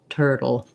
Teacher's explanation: this l e is a dark syllabic l so there's kind of a little tiny hidden schwa in there like an uh sound but mostly i go right from my flop to my l